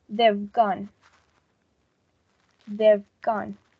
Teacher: Now we have only one word in which only the last phoneme of the word have has been attached to the first word, and instead of saying like we previously did, they have gone, we are going to say they've gone. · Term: reduction